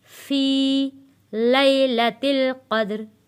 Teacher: या साकिन है, या साकिन से पहले ज़ेर है, इसलिए हमने इसको खींच कर पढ़ा है।